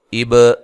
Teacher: با پہ قلقلہ کرنا ہے